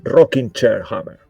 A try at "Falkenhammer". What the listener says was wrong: There's an F, though. There. Yeah, Falkenhammer. Say it with your chest, you know.